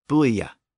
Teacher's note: a two- syllable word with a Y sound in between